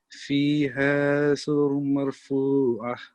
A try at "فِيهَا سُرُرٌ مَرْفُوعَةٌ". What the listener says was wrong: Try to have a more prominent ikhfa here on the meme. So it's فيها سرر مرفوعة. So it's idgham here. You have to assimilate the sounds.